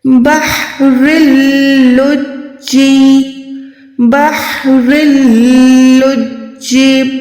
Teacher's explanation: یہ ہم کہتے ہیں ادغام بغیر گننے والا، جس میں گننا نہ ہو، آواز ناک تک نہ جائے بلکہ منہ سے ادا ہو.